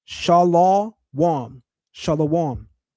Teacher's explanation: The Lashawan form, shalom, introduces an unwarranted aw diphthong